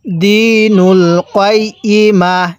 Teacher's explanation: ওয়াকফের সময় এই তা টাকে আমরা হা বানিয়ে পড়বো